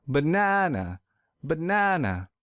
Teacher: I will stress the second syllable real hard.